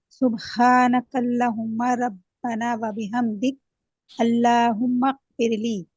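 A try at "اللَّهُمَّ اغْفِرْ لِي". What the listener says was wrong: अल्लाहुम्मा है, गैन है, काफ नहीं, अल्लाहुम्मा, हाँ, मग़फिरली। हाँ, ली को क्या करना है, 2 हरकत।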